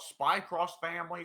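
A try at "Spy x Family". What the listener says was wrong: It's Spy Family. Spy yeah, the X is silent.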